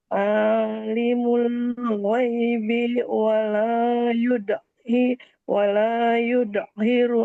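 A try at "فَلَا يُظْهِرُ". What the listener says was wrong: Fala, bukan wala, Bun. Fala.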